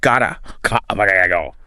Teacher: often pronounced with almost a soft d sound like gota go.